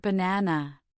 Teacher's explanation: The stress is on the second syllable. The first and last syllables are both pronounced as awah but ana.